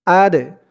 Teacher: এই দাল হচ্ছে কলকলার হরফ ধাক্কা দিয়ে পড়তে হবে